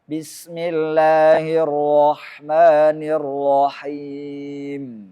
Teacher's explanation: menjaga supaya ujung lidah tidak bergetar berulang-ulang dengan tidak menampakkan getarannya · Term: sifat takrir